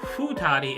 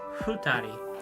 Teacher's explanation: you don't pronounce the F like an F. It's like an F and an H had a baby.